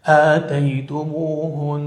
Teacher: أي وقعت في آخر الكلمة، متطرفة أي وقعت في آخر الكلمة، نحو مثلا قال الله جل وعلا آتيتموهن، فكثير من الناس يقرأ آتيتموهن، وهذا خطأ في الوقف، بل لابد من إظهار الغنة التي مقدارها حركتين